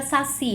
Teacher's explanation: Saci é uma oxítona, eu tenho a sílaba tônica si